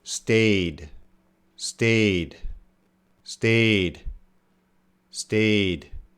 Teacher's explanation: it's a voiced sound so we're definitely gonna have the D